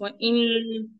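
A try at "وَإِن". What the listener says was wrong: वाइयो वाइयो। हाँ मुंह बंद हुआ तो मुंह अगर बंद हुआ तो वो गुन्ना होता है। देखिए मैं बोल रहा हूँ, देखिए व इन, ये क्या हो रहा है, ये गुन्ना हो रहा। हमको गुन्ना नहीं करना, इख्फा करना। वायुदहुम, नून का जो मखरज है ना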